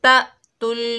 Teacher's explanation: ساکن حمزہ کو جھٹکے سے پڑھیں گے